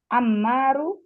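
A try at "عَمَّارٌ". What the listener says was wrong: Tanwin. Ammarun.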